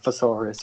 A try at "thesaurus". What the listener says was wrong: saying it with You're saying it with an F. You're saying thesaurus, not thesaurus. You're saying thesaurus.